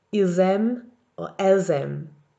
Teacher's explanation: Now for the second column, nous, vous, il and elle plural, nous, vous, il and elle all end in a silent S. But when the next letter is a vowel, you're going to hear that silent S as a Z sound